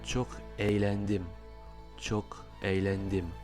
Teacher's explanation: On entend ce léger y à la place du g avec l'accent circonflexe à l'envers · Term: g mouillé